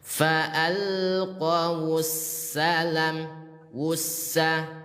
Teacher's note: Karena idgham syamsiyah lebur. Langsung masuk ke huruf sinnya.